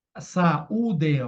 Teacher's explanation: o iato são dois sons separados